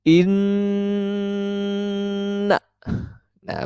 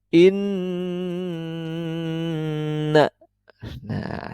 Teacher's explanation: melantunkan lafal pada huruf yang bertasydid yaitu Nun bertasydid mim bertasydid dan dibunyikan dengan dengung yang keluar dari dalam hidung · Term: ghunnah musyaddadah